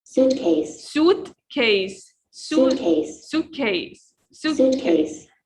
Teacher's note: And we stress on the first word. You see? The apostrophe here means this is the strongest part in the word.